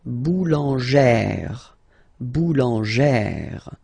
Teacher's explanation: E plus this accent grave, you pronounce it like E, really open E sound